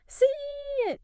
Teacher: You've got the e sound meeting the i sound. So, often you'll hear a little e-glide pop in.